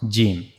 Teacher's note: And we also read about the pronouncing points of these three letters. For gimm we have to use the middle of our tongue and we have to meet the middle of the tongue to the roof of the mouth